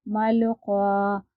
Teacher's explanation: دیکھیے الف سے پہلے زبر ہو تو الف ہمیشہ مدہ ہوتا ہے، تو یہ حرف مدہ ہے، اور حرف مدہ کو ہمیں ایک الف کے برابر کھینچ کر پڑھنا ہے